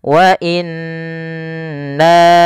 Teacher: munfasil artinya terpisah Jaiz itu boleh Mad panjang maka di sini nanya dipanjangkan sepanjang empat harakat atau lima harakat wa inna setelah pertama menahan Nun n ya kemudian nanya dipanjangkan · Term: Mad Jaiz munfasil